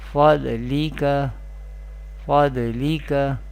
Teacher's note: Dod is mustaliya letter, will be pronounced with heavy voice or thicker voice